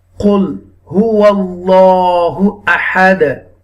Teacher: You will read this Ism Jalalat with the Tafkhim. The meaning of Tafkhim, bold, heavily, strongly. You will read Allah name Ism Jalalat because there is a zabar before Ism Jalalat.